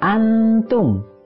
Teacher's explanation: nun sukun bertemu dengan ta, hukumnya adalah ikhfa, artinya samar. Dibacanya dengan dengung, ditahan dulu 2 harokat. Antum, itu dibaca panjang 2 harokat.